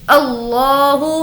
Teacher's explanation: लफ्ज़ अल्लाह को पुर पढ़ेंगे